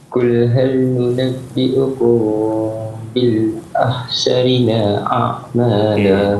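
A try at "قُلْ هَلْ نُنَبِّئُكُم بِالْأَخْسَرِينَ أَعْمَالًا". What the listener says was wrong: Akhsarina a'mala. Cuma akhsari bukan ha, dia akhsari.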